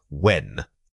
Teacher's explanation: When you say when, you are simply rounding your lips and letting the air escape smoothly.